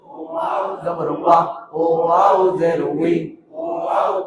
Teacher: দুই ঠোঁটের মাঝখানের ফাঁক থেকে আদায় হবে